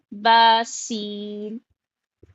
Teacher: की जो सिफात है उस पर भी हमको ध्यान रखना है यानी कि सीन में सीटी की आवाज होती है